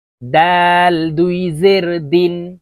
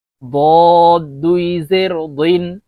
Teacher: ডাল পাতলাভাবে উচ্চারণ হবে, দদ মোটা করে উচ্চারণ করতে হবে।